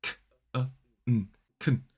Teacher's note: So it has a schwa in the middle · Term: weak form